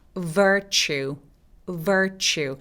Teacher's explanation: 추 할 때 입술이 쭉 내밀어지는 추 소리입니다.